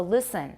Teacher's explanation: I do have alveolar contact for a pre-vocalic L. So listen, my tongue will touch.